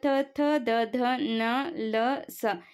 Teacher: ರೀತಿ ದಂತ್ಯ ವರ್ಣಗಳು ಈಗ ತ ಥ ದ ಧ ನ ಲ ಸ ಇವುಗಳನ್ನು ಹೇಳುವಾಗ ನಮ್ಮ ನಾಲಿಗೆ ಏನಾಗುತ್ತೆ ಅದು ಹಲ್ಲಿಗೆ ಟಚ್ ಆಗುತ್ತೆ